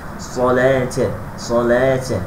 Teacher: Ni ta'u ta'nis dia wasal sambung Ini ta'ul marbutah. Ta'ul marbutah sifatnya mesti huruf ta, tapi dengan saya mesti hamaskan ataupun dipercikkan, dihembuskan suara ta. Salata, salata mesti jadi macam tu.